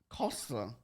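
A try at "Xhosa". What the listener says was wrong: Costa. You gotta hear the click. Costa.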